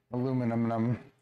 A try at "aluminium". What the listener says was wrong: Aluminium. Aluminium. Say it with me. Aluminium. We use the metric system and we pronounce aluminium, aluminium.